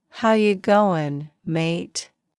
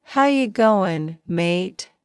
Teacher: Australian accent. Casual and relaxed words often end with a rising tone. Sounds are blended tightly.